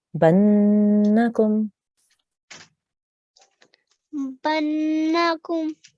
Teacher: this is a noon gunna. So we will hold on that nasal sound for 2 seconds.